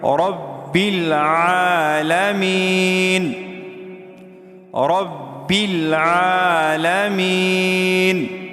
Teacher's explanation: عین حلق سے ادا کیا جاتا ہے